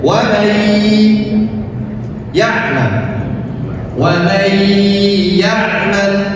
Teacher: Yang pertama nun sakinah bertemu dengan ya, yang dimana ya ini adalah salah satu huruf idgham bi gunnah. Maka cara membacanya adalah dengan memasukkan nun sakinah kepada huruf setelahnya, yaitu ya. Wa may ya'mal, wa may ya'mal, dan ditahan dua ketukan.